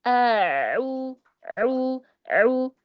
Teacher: hamzahnya di awal a jelas ya, al-jaufnya jelas. Kemudian ketika masuk huruf ain, mulai dialirkan dia bainiyahnya.